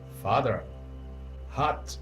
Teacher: Esse A é um A bem parecido com o nosso português, mas ele é meio curto, né? Diferente do nosso A de casa, bem diferente.